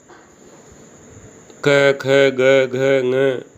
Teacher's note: ये सब कंठ से उच्चरित होते हैं, इसलिए इन्हें कंठ वर्ण भी कहा जाता है